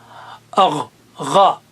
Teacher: حلق کے اوپر کے حصے سے غین ادا ہوتا ہے